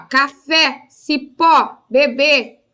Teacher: então a sílaba tônica é a última